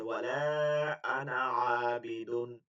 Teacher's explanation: এই আনাটা আরবরা কখনোই টানে না, না টাইনে কথা বলে।